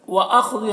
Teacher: خا کو پر پڑھیں گے، حروف مستعلیہ میں سے ہے